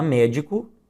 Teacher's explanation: na palavra médico, em que a sílaba tônica é a antepenúltima, nós temos uma palavra proparoxítona